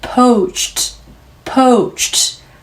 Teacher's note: 공기 터지는 소리에 오 연속하시고요. C sound 소리로 끝이 나면 같이 무성음 터지는 소리로 마무리.